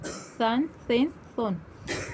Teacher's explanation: ثا، دو زبر ثن، سا کی تنوین کے بعد الف ہے تو ہمیں اس کو اس کو ہمیں نہیں پڑھنا ہے، اس میں ہمیں سیٹی بھی نہیں ظاہر کرنا، سا نہیں پڑھنا، ثا پڑھنا